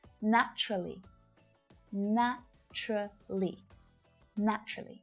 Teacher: when a native speaker says this word out loud usually you'll only hear three syllables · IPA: /'næ t∫rə li/